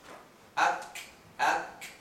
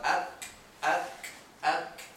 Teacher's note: a little burst of air comes out. Ak, ak. That is characteristic to the kaf.